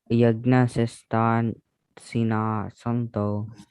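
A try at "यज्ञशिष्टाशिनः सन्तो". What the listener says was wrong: Shishta. All the sas in this are shas. Yagna Shishta Shina Santo.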